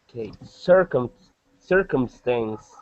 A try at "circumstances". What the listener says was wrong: Okay, yeah, and there's an S on the end there. So circumstances.